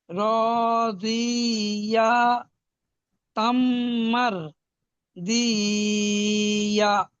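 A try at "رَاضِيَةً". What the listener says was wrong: জি টান হচ্ছে কেন? জিয়া, জদ ইয়া জের জি, ইয়া হা জবর ইয়া, জিয়া, জিয়া।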